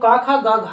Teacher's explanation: क ख ग घ को बोलते हैं कंठ से